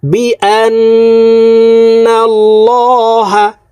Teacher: এখানে ওয়াজিব গুন্নাহ হরকতের বামে নুনের উপরে তাসদিদ আছে এই কারণে এই হামজা তাসদিদওয়ালা নুনের সাথে নাকের বাসি থেকে গুন্নাহ করে পড়ব গুন্নাহটি 3 সেকেন্ড পরিমাণ ধরে রাখব